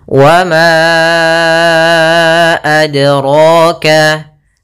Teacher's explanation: Yaitu kita panjangkan 4 atau 5 harokat. Maka ma-nya kita panjangkan dahulu baru kita baca a-nya. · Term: mad jaiz munfasil